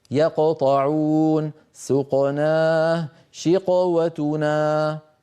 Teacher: درجه تفخيمها واحده فالقاف في الامثله الثلاثه لها نفس الصوت